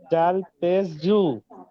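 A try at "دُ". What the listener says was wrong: জাল নয়, এটা দাল।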